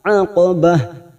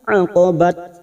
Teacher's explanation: tak marbuto yang dibaca waqaf, ujungnya seperti huruf h. Aqabah, bukan aqabat tetapi aqabah.